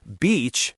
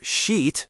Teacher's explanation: Linguistically, this is the distinction between tense and lax vowels. The E in beach is a long, tense vowel. You almost have to smile to say it. The I in the other word is short and lax.